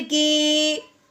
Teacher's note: अब हमने इसको काफ को या के साथ मिलाते हुए एक अलिफ के बराबर लंबा करना है